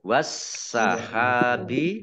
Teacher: tidak dibaca, langsung masuk ke huruf sin, ditandai dengan sinnya ada tasdidnya, sinnya dibaca double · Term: alif lam samsiyah